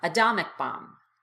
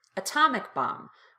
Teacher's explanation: However, if the T is at the beginning of the strongest syllable, as it is here in atomic, you have to pop the T out as a true T.